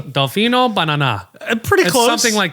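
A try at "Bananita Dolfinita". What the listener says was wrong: Pretty close. Pretty close. It's inverted. It's bananita dalfanita. That's bananita dalfanita.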